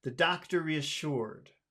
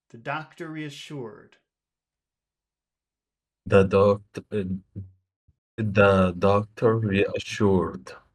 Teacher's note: I would put all of the strength on sure.